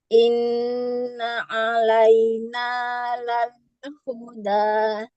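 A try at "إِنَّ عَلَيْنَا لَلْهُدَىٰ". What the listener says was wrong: Nah, coba Bu, dalnya agak turun sedikit Bu.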